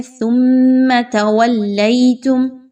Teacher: میم ساکن کے بعد حمزہ آ گیا تو یہاں پہ غنہ نہیں کریں گے، اظہار شفوی ہوگا